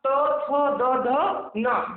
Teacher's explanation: जब इसका उच्चारण हम करते हैं तो हमारी जीवा किसमें टच होती है? दांत से। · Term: दंत व्यंजन